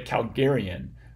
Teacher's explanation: this vowel which we write with an A but we actually say with a schwa in normal circumstances if you're like me that becomes an Epsilon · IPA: [kælgɛ́riən]